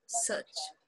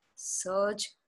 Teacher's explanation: the cha is voiceless ja is voiced